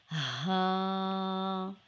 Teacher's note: is ha it is just like the English letter H sound ha is a light sound and vocal sound letter it is pronounced from the deepest part of the throat